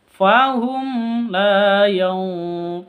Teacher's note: Mim mati bertemu dengan lam, jelas karena izhar safawi.